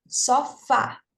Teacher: Veja, a sílaba mais forte é o fá, né? Que é a última. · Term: oxítona